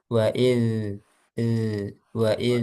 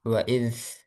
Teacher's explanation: coba zalnya jangan sampai ada udara tapi yang ngalir suara